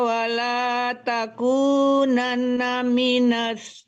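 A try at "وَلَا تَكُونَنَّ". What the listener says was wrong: Wala takunan didengungkan. Ada nun gunnah di situ. Nunnya panjang. Kenapa kita tidak ada panjangnya?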